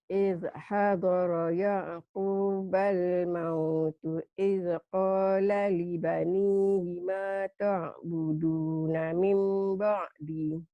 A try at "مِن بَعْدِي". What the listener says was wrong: Mim ba'di panjang. Idh hadara Ya'qubal mautu idh qala libanihi ma ta'buduna min ba'di.